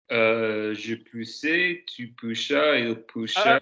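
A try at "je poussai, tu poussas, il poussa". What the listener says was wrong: Pousse, not push. We're not Sean Connery. Pousse.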